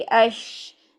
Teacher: ज़ुबान का दरमियान तालु से लगे, ठीक है। लेकिन इसको आपने पूरा टच नहीं करना है, इसमें थोड़ी सी स्पेस रखनी है। स्पेस रखेंगे तो हमारी तफशी फैलेगी, स्पेस नहीं रखेंगे तो उसमें एक अजीब सी साउंड सीटी वाली आ जाए, अश यूँ आ जाएगी, जो कि गलत है, ठीक है।